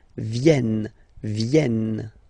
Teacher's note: this classic ending ent for the third person of the plural is here, but phonetically it doesn't exist, so you don't pronounce it.